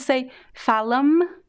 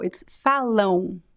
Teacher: Remember what I said? The M at the end of words in Portuguese, it is not pronounced.